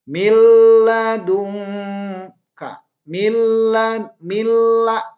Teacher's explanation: Karena dimasukkan nun ke dalam lam, maka si nun ini seolah tidak ada. Milla yang ada adalah lam. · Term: idgham bila gunnah